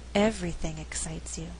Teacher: the word being emphasized is everything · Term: stress for emphasis